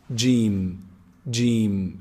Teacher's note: gene is pronounced from the middle of the tongue the middle section of the tongue and the roof of the mouth from inside